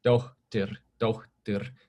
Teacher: In Icelandic, that puff of air happens before some consonants. So like the name suffix that people have, meaning daughter of someone, is dóttir, dóttir.